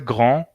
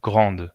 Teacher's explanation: Simplemente porque la D no se pronuncia en masculino.